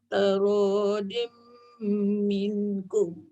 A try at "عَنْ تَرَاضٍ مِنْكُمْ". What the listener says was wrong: Minkum sikit lagi dengung.